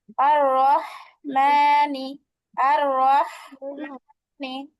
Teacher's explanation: গলাটা ফ্যাস ফেসে আওয়াজ আসবে মধ্যখান থেকে চাপায়া